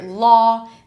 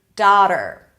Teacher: in some dialects, this aw sound will be pronounced as ah. So instead of daughter, you'll hear daughter. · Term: the merge